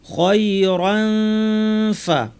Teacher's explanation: মাতা মাতা খায়রান ফা, এই ক্ষেত্রে যেহেতু ফা এসেছে, দাঁত আর ঠোঁট দিয়ে ফা উচ্চারণ করা হয়, দাঁতকে ঠোঁটের উপর এনে নাক থেকে গুন্না করবো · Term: ইখফা